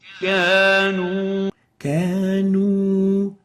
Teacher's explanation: mixing the wow with an alif is basically reducing the pursing of the lips and ending up with the English O